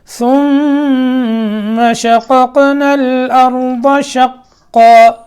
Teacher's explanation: ثم ثا پھر میم مشدد میں غنہ، شققنا قاف میں، دوسرا قاف ساکن ہے، قلقلہ کرنا ہے، ٹھیک ہے؟